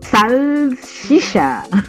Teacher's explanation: a palavra salsicha sofre o processo chamado palatalização, no qual a consoante L adquire uma articulação palatal, ou seja, a língua toca o céu da boca